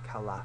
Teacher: us both new zealanders and Australians and most places in England we don't pronounce the final R · we pronounce it as if it ends in UH instead of R